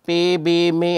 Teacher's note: consonant sound that is produced by bringing the upper and the lower lips together is called bilabial uh consonant so babal which is produced by